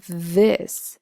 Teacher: if you say the word this and you put your hand over your throat you'll notice that it is voiced on the palatal side this top squiggly s looking thing that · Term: voiced th